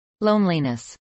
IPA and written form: lˈoʊnlinəs (loneliness)